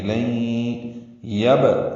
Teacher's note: یہ با ساکن پہ قلقلہ ہے